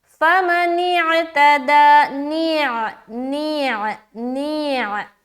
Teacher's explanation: نون کو ادا کرتے ہوئے عین کی مخرج میں جا رہے، حلق میں جا رہے